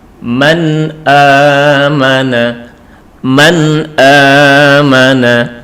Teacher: harus dibaca dengan jelas ataupun terang tanpa ada dengung